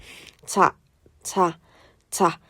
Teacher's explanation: 뭔가 막았다가 터트리면서도 약간 통로에 공기가 쓱 마찰되는 약간 이어지는 느낌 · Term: 파찰음